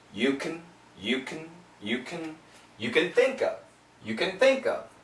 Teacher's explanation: Remember, can almost always in daily English sounds like kun. So it's a k, very short sound, schwa, but really short, and an N.